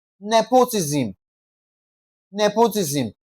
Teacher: Nepotism is stressed on the first syllable